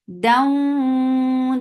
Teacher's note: this is idgham with gunna, so keep the sound in your nose for a longer time.